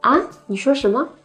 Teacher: Ah in the second rising tone